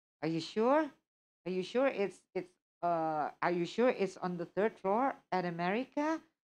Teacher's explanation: it was like the rising intonation. And that kind of intonation shows like doubts.